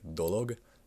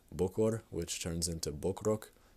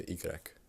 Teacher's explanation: There is another case that, I hate to tell you once again, has to just be memorized. These are words where the last vowel is dropped altogether and the final consonant shifts over